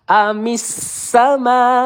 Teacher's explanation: Ditekan huruf tasdid ya di sini huruf sin.